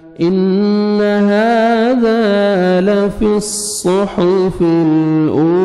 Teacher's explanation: نون مشدد ہے، غنہ کریں گے، نوز میں ساؤنڈ لے کے جائیں گے · الف مدہ ہے، ذال کو 1 سیکنڈ بھی کھینچنا ہے آپ نے ایک الف کے برابر